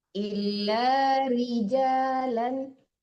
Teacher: Ra kasrah ditepiskan ri, jangan nuri, tapi ri tipis.